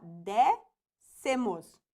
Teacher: Novamente, ó, última, penúltima e antepenúltima. Novamente, a antepenúltima sílaba é a mais forte, então aqui também nós temos uma proparoxítona.